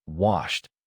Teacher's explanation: Wash ends with SH, which is voiceless. The past form finishes with t, so say washed with one syllable. If you hear wash id, stop and remove the extra vowel. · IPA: /t/